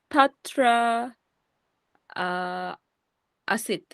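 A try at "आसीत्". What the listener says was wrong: Asit. That is long. Asit.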